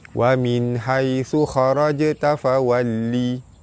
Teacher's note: Nun mati bertemu dengan ha, izhar halki, terang jelas tanpa dengung